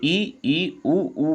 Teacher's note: जैसे ई ऊ बोलते हैं तो हमारा मुंह कम खुलता है।